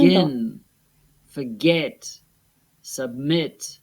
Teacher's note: The last syllables are stressed.